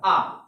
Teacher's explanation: आपको खुद फील हो रहा होगा जो आ है वह कहां से निकल रहा है, वह पश्च से निकल रहा है